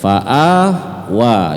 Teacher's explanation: a dan wa tidak boleh lebih dari 2 harakat, karena itu adalah fathah panjang dua-duanya. Fathah panjang dibaca panjang cuman 2 harakat, tidak boleh lebih.